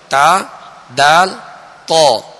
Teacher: زبان کی یہ نوک اوپر کے جو 2 دانت ہیں سامنے والے، ان کی جڑ اندر کی طرف جو اس کی جڑ ہے یہ اس سے ادا ہوتے ہیں، یعنی ان کا ایک ہی مخرج ہے، تا دال تو۔